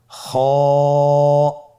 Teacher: খ হরফটির মাখরাজ হলো কন্ঠনালীর শেষ ভাগ হতে উচ্চারণ করতে হয়। কন্ঠনালীর শেষ ভাগ।